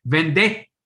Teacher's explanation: you have to lengthen that second t